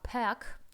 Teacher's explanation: Добавляйте в уме после к Добавляйте мягкий знак смягчать его как будто бы там есть мягкий знак